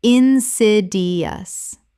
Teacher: Four syllables with the stress on the second.